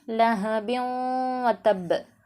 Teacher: லஹபின் வதப், எர்மலூன் அப்படிங்கிற இந்த ஒரு சட்டம் இதுகாம் பில் குன்னா, தன்வீனுக்கு பிறகு எர்மலூனில் உள்ள 6 எழுத்துக்களில் ஒரு எழுத்து வந்துச்சுன்னு சொன்னால் இதை நம்ம வந்து குன்னா செய்து ஓதணும். அதாவது இதுகாம் பில் குன்னா, இதுகாம் பிலா குன்னா அப்படின்னு சொல்லிட்டு 2 விதமாக பிடிப்பாங்க.